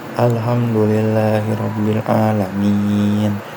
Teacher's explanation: mad sebelum huruf yang disukun karena wakoh, dibaca 2-6 harokat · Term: mad arid disukun